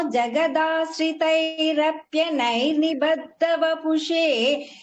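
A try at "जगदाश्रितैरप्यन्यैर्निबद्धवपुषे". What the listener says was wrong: என்யைர்னு சொல்லணும். எனைர் கிடையாது, என்யைர். அந்த இடத்துல மட்டும் கரெக்டா அங்கதான் சொல்றேன். ஜெகதாஸ்தைரப் யன்யைர். நாக்க வந்து நிறுத்தணும், அங்கதான் உங்களுக்கு என்யைர்.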